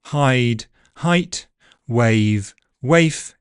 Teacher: The ones ending in e, for example, are particularly prone to shortening in pre-fortis clipping, so hide, height, wave, waif, etc. You can hear the second word was significantly shorter than the first because of the voiceless consonant at the end of it.